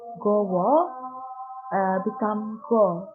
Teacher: Wo last syllable is lost. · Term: syncope